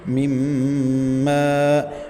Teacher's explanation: میم مشدد کا غنہ ہے تو یہاں ساؤنڈ کو ناک میں لے جانا ہے